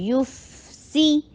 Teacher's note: ہونٹوں کو گول کر کے فا کا آواز چلاتے چلی جائیں، رخاوا ہے